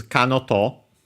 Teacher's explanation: we have this kanoto, accent on the no